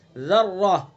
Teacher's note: را مشدد ہے، را کے اوپر زبر ہے تو اس لیے را کو پر پڑھیں گے